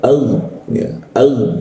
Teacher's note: G mati itu di atas jakun ag ya ag ee ketika gain dimatikan itu ee rongga udara itu tertutup sehingga tidak ada hembusan udara